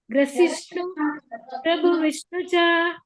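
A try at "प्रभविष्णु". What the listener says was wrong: ಪ್ರಭ ವಿಷ್ಣು ಚ. ಪ್ರಭಾ ಇದೆ, ಪ್ರಭು ಇಲ್ಲ. ಪ್ರಭಾ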